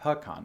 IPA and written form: pɪˈkɑn (pecan)